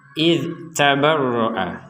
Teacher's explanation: huruf dzal sukun ini pertama jangan sampai dipantulkan. Jadi misalkan kita membacanya idz tabarra, idz gak ada ya kan, gak ada huruf ataupun harokat berbunyi kemudian dzalnya tidak dipantulkan, itu tidak boleh.